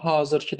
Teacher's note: birinci hecada uzanma müşahidə olunur. Hazırkiı sözündə məsələn mən özüm hazırkiı deyirəm, a-nı uzadıram.